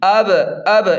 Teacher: دھیان دیں بچوں، یہاں با پر جزم ہے تو با پر قلقلہ یعنی جھٹکا ہوگا، یعنی آواز لوٹ کر آئے گی